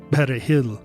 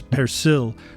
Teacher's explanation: to pronounce the word properly you're supposed to slightly trill that letter r